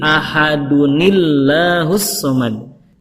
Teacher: Kata Allahnya dibaca tarkik karena sebelumnya kasroh